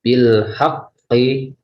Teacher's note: pada tasjid ini tidak usah dipantulkan, sekedar cuma hanya ditekan saja.